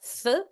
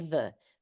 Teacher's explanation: They're made in the same place, slightly different degrees of pressure, and one is unvoiced and the other one is voiced.